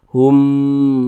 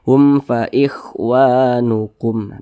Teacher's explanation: dia tidak dipanjangkan karena dia tidak didengungkan jadi pendek saja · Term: izhar syafawi